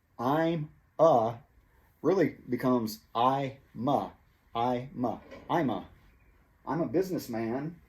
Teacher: the word a is reduced to uh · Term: reductions